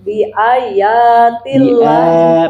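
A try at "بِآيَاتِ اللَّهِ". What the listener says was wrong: Panjang bi ayat. La-nya panjang. Lafaz Allah sebutnya panjang. Bukan lahi, bukan lahi. Lahi. Nah, panjang. Allahnya panjang ya. Jadi ya lamnya di lafzul jalalah panjang atau pendek? Panjang. Meskipun tidak ada tanda panjang di Al-Qur'an Timur Tengah.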